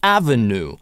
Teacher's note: слово «avenue» американцы чаще выговаривают без [j], «avenue», но некоторые произносят и с йотом как «avenue».